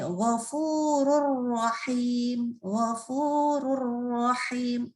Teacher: Jadi nunnya langsung melebur ke huruf ro, nggak boleh ada, tidak boleh dengan dengung, nggak boleh ditahan. Maka di sini ghafurur rahim, ghafurur rahim, rur bukan run. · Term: idgham bila gunnah